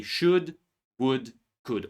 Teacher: Remember that these words we don't say L. These are modal verbs and we don't pronounce L in these words. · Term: Silent L